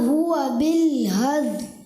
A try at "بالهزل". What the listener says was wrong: حزل، زا کی ادائیگی کلیئر کریں۔